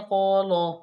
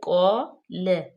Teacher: ہونٹوں کو چوڑا کر کے، لام باریک